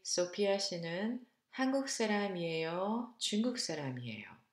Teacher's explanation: Notice that intonation goes up in the first choice and go down now in the second choice.